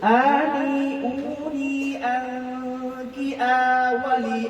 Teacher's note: গুন্না মোটা হবে না, গুন্না পাতলা হবে। মোটা হরফে আসলে গুন্না মোটা হয়, পাতলা হরফ আসলে গুন্না পাতলা হয়।